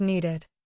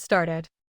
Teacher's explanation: When a base verb already ends in T or D, the extra vowel protects the pronunciation. Want becomes wanted with an ID ending.